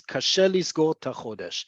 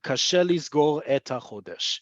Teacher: you're going to hear native Hebrew speakers say tachodesh instead of et chodesh. Not all the time, but you're going to hear it enough that it is worth indicating that.